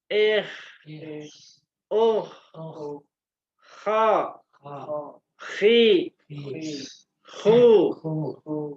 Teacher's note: Jadi ada aliran udaranya ada mengalirnya ada pangkal lidah yang terangkatnya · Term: istil